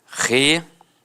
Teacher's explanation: Algumas pessoas dão uma extensão na fala e acabam falando relatório. Então, separa o O do I